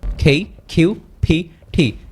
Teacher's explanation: এটা হচ্ছে অ্যাসপিরেটিভ সাউন্ড। এখানে হচ্ছে মুখের ভিতর থেকে একটা বাতাস বের হবে।